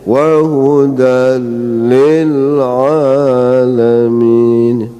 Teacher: Jadi jangan sampai lam yang bertasdid itu melahirkan lam lagi. Jadi kita nggak boleh wahudal, itu nggak boleh.